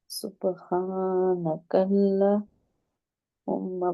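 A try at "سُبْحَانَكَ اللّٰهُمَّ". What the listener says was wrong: لام کے اوپر کھڑی زبر ہے. کے اوپر کھڑی زبر ہے.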